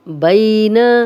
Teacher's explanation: بین، یا لین ہے، جزم والی یا، پیچھے با پہ زبر، نرمی سے پڑھیں گے بغیر کھینچے، لمبا نہیں کریں گے، نون کی زبر کو لمبا ہونے سے بچائیں گے۔